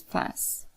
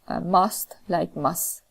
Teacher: if there is any word final alveolar cluster, for example fast, then t would be deleted and it would be pronounced as fast. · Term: word final alveolar cluster reduction